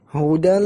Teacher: Hudal, karena ini idgham bi ghairi ghunnah.